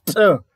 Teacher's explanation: ntlha ya leleme e ntse e thetsa marereneng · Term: alveolar